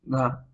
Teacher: घा एक सघोष महाप्राण ध्वनि है